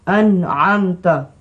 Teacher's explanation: yang ini kepala Kha apa ertinya hendaklah dibaca dengan izhar ertinya hendaklah dibaca dengan terang nyata tanpa dengung